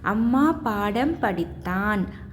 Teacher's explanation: மகர எழுத்துக்கள் தனக்குரிய அரை மாத்திரை அளவில் முழுமையாக ஒலிக்கிறது